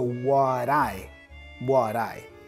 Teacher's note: Da da da da da. You join that da da sound with the I. · The T for what has a flap sound. Da da da da da. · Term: connected speech